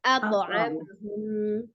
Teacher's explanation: ada huruf to disukunkan, maka dia dihukumi qalqalah atau dipantulkan. Tapi tetap tebal ya, tidak ate tapi atau amahum ya.